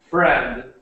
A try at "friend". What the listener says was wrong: Friend. When you were saying it, you were saying like a little sound after, like friend, friend. But we just say it like friend, and it ends at the friend. So friend. Almost, yeah, almost like a t sound. It's just a very short, like friend, not friend.